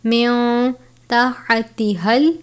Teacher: باریک والا ہا ہے، حلق سے ادا کرتے ہیں